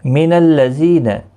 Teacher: زی یا مدہ ہے، ایک الف کی مقدار کے برابر کھینچ کر پڑھیں گے، نا کو کھینچنا نہیں۔